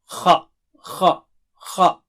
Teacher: حلق کے اوپر کے حصے سے ادا کیجئے خا کو